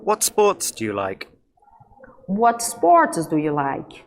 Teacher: eu tenho aqui uma pergunta com what, então o finalzinho vai ficar decrescente